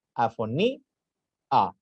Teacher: Aquí estoy haciendo uso de lo que es el hiato, donde separo una vocal de otra, una sílaba de otra. Afoní, a. Se pronuncia separado.